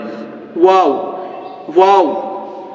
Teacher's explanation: দুই ঠোঁটের মাঝখান থেকে ওয়াও উচ্চারণ হবে